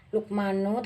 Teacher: Luqmanu termasuk dalam qalqalah sugro karena ada huruf qaf mati di dalam kalimat. Cara membacanya membalik membentuk huruf qaf.